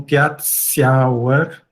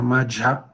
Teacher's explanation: seguidas de uma semivogal palatal, né? Ou também do i, acabam sofrendo palatalização